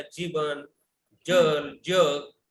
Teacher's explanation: पहिला ज जो आहे तो सॉफ्ट ज आहे. त्याला हा आपण तालव्य ज म्हणतो.